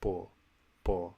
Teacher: when I hear bo, I don't hear aspiration at all